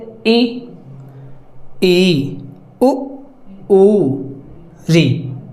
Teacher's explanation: संवृत स्वर जिसमें लगभग मुह नहीं खुलता है